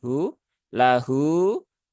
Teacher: Nah, maka pastikan dia hak ya, dia keluar dari sini ya, tenggorokan yang paling bawah bersama dengan hamzah, hu, lahu, dan di sini hu-nya dibaca panjang 6 harokat.